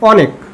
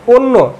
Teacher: অটাকে ও হিসেবে উচ্চারণ করছি